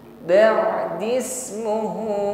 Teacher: panjangnya 4 harokat, 2 alif atau kita ukur 2 kali ayun